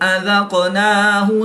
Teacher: قاف حروف کلکلہ میں سے ہے اور یہ ساکن ہے تو یہاں پر ہم کلکلہ صغریٰ کر کے پڑھیں گے